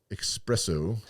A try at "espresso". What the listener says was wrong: Nope. There's no X in espresso.